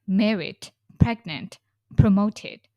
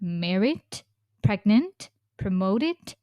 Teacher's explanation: Your intonation goes up in the end. That's the continuing tone.